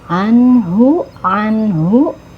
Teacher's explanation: ain makhrajnya ada di tenggorokan bagian tengah ya jangan tertukar dengan Hamzah